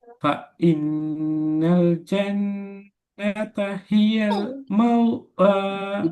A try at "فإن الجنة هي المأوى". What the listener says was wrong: மவுவாண்டே ஓதுறீங்க ம உவ வரலையே ம உ வரக்கூடாது ம உவ மவு இல்லையே இப்ப என்ன சொன்ன மவுண்டு வராதே மவுவாண்டு வராண்டா பிரதர் அவனுக்கு வாவு வந்திக்கணும் சுக்குன் செய்யப்பட்ட வாவு மவுவ அலிஃபிட சுக்குன் வச்சா முதலாவது அலிஃப சுக்குன் இப்ப சரியா வருது அலிஃப்ல சுக்குன் வச்சா உச்சரிப்பு எந்த இடத்துலயும் உதாரணம் ப உ த உ ம உ வ உ ய உ இப்படிதான் வரும் கடைசியில உ உ சவுண்ட் தான் வரும் மவு சவுண்ட் வராது விளங்குதா? இந்த வித்தியாசம் விளங்குதா அவனுக்கு ஊ மவு மவு மவு என்று